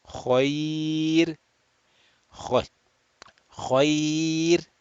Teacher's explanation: And because it is preceded by ya sakin, or ya layyina actually, which is ya sakin preceded by a letter with a fatha, ra sakin will be read flat, muraqqaq